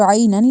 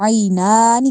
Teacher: ایک عین کو حلق سے نکالنا ہے، نون کو کھڑی زبر کی وجہ سے لمبا کر کے پڑھنا ہے